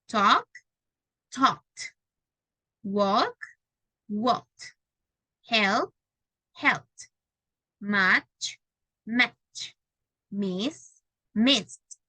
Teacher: Do not feel vibration, you add letter T sound in past.